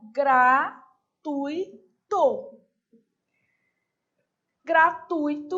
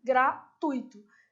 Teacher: E ela é paroxítona. Sílaba tônica, tui, gratuito. Se você, por acaso, falar gratuito, corre o risco de errar também, né?